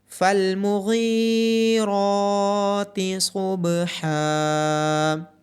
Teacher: غین کے بعد یا مدہ، را کے اوپر کھڑی زبر اور حا کے بعد الف مدہ ہونے کی وجہ سے ان کو لمبا کیا جائے گا۔ غین، را اور صاد کو موٹا پڑا جائے گا اور با پہ قلقلہ ہوگا۔